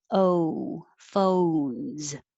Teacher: It's a single syllable word, but the O in English is stretched out longer and has an O-oo sound